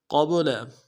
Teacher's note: قبل، قاف کو موٹا کریں گے، با کے سامنے لانا ہے، با جب جزم ہو تو قلقلہ ہوگا، قلقلہ کریں گے